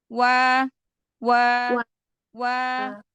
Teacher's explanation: maka ketika kita mengucapkan huruf waw, udah dengan memonyongkan kedua bibir dulu. Wa. Ya, jadi ketika langsung, jadi makhraj harokat barengan.